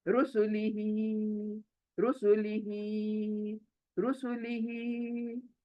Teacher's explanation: तो सू को भी खींचते हैं, तो नहीं, रू सू जल्दी, ली भी जल्दी, रुसुलिही, तो ही पर खींच कर रुक जाना है